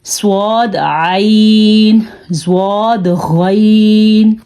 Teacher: اب ہم نے یہاں پہ صاد کو بھی پر پڑھا ہے، زواد کو بھی پر پڑھا ہے اور غین کو بھی پر پڑھا ہے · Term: حروف مستعلیہ